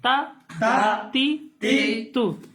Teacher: زبان کی نوک اور اوپر کے دانتوں کی جڑ سے